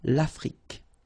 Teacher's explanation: L'Afrique, same thing here, final E, it's only the K, K at the end that you will hear